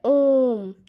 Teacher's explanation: 3 मात्राओं का मीन्स ये ओम है। जब हम कहते हैं ओम तो हम ज़्यादा समय लगाते हैं, हम 3 मात्राओं का समय लगाते हैं। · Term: प्लुत स्वर